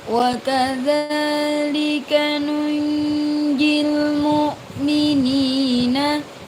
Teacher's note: ada nun sukun bertemu dengan jim namanya ikhfa. Cara membacanya samar.